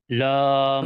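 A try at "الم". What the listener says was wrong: না, আলিফটাকেও বলতে হবে। আলিফ।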